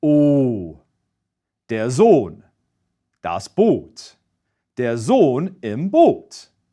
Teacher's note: Regular German O, without the umlauts, is a pure vowel sound than English O. In German, the lips are rounded and the tongue bunches up toward the back of the throat, but we get a purer sound.